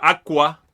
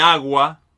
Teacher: es más económico para nosotros seguir usando las cuerdas vocales en lugar de interrumpir las cuerdas vocales para decir una consonante que es sin cuerdas vocales